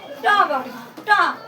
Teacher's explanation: ट वर्ग में जो हमारा व्यंजन बोलते वक्त जो हमारी जीभ है वो हमारी मूर्धा को टच करता है, तो इसको हम मूर्धन्य या मूर्धा भी बोल सकते हैं।